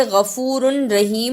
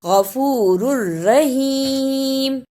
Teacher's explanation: غفور الرحیم، اسے غفور رحیم نہیں پڑھنا، را کو را سے ملانا بھی ہے اور شد کی صحیح ادائیگی بھی کرنی ہے